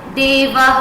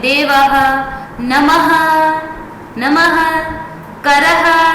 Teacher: मुख से ह जैसी ध्वनि निकलती है। यह स्वर या व्यंजन के अंत में उच्चारित होता है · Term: विसर्ग